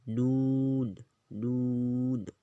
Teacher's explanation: سیرہ زبان تالوں سے مل کر نون ادا ہوتا ہے